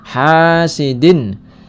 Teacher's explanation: karena ada fathah bertemu dengan alif dibaca panjang dua harakat hasidin ya ini hukum bacaan izhar karena ada tanwin bertemu dengan